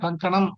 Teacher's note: ఆ పక్కన సున్నపడితే కం అని పలకాలిగా మనం కంకణం అనం మనం కంకణం కంకణం అంటే మీరు కచ్చితంగా ఇన్యా కింద కానే పలుకుతున్నారు మీరు